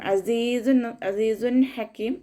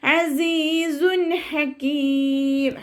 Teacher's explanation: തെൻവീനിലുള്ള നൂനിന്റെ സൗണ്ടിനെ വ്യക്തമായിട്ട് കേൾപ്പിച്ചിട്ട് മണിക്കാതെ ഓതുട്ടോ അസീസ വ്യക്തമായിട്ട് കേൾപ്പിക്കണം അസീസ അസീസ ഹക്കീം മണിച്ചിട്ട ഓതരുത് അസീസു ഹക്കീം ഹ